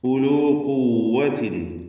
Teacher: ഖാഫ് വരുന്നുണ്ട്. തഫ്ഖീം ചെയ്യേണ്ട അക്ഷരമാണ്. നിസ്ബിയ തഫ്ഖീമാണ് ദമ്മായതുകൊണ്ട്. ഖുവ്വത്തിൻ എന്നതിന് തൻവീൻ ശേഷമുള്ള വാവ് വന്നതുകൊണ്ട് ഇദ്ഗാം ബിഗുന്ന ചെയ്ത് ഖുവ്വത്തിൻ വ എന്ന് ലയിപ്പിച്ചുച്ചരിക്കണം.